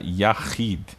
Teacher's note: A gente tem aqui a kamatsu, a vogal A longa. Depois a gente tem a letra Het, né, com som do RR gutural feito na garganta. Depois eu tenho uma Hirik, mais a sua mãe de leitura Yud, formando a Hirik Malê com som do I.